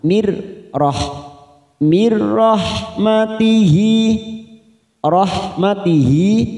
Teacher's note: ada nun sukun bertemu ro namanya idgham bila gunah hanya masuk tanpa ditekan lama-lama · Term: idgham bila gunnah